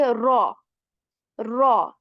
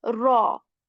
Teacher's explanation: So we say raw, raw. You will hear a bit of rolling at the start, but I'm not overdoing this. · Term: rolling sound